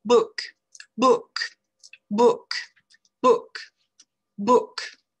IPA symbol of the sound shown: bʊk